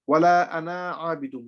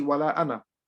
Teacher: Okay, normally the alif following the fatha will be stretched. However, the alif in the word ana will not be stretched, it will always be silent